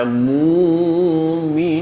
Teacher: mereka akan membaca Mukminun hamzahnya diganti dengan wau.